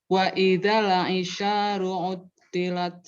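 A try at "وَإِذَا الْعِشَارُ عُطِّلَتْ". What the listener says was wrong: Nah, lamnya jangan buru-buru pindah. Wa idzal coba. Wa idzal Jadi jangan buru-buru di lamnya maksudnya. Ada kan buru-buru. Wa idzal isyaru. Jadi jangan buru-buru di lamnya. Dirasain lam yang ngalir.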